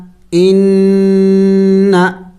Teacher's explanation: میں نے غنہ کیا اس لیے کہ نون مشدد ہے، نون مشدد پر ہمیشہ غنہ کیا جائے گا ، تو یہاں پہ غنہ کرنا ہے، ان، کاف میم پیش